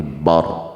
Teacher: barnya karena roknya kita wakafkan, maka roknya ditafhimkan, ditebalkan, bar ya, bar bukan bar tapi bar, tebalkan.